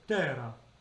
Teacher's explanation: you can say terra and make it an actual D, and it sounds like a flipped R.